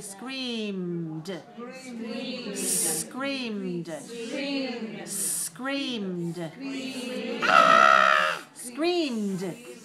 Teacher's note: But we don't add an extra syllable. We only add the sound d.